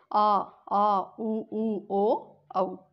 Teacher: पश्च यानी पीछे। तो इन स्वरों के उच्चारण में जिह्वा का पश्च भाग यानी पीछे का भाग सक्रिय रहता है। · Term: पश्च स्वर